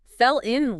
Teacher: fell in links nicely too with the l sound connected